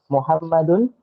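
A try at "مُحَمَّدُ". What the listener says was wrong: berarti bukan Muhammadun, harusnya gimana? Ayo. Muhammadu, nggak pakai tanwin, dikoreksi bukunya.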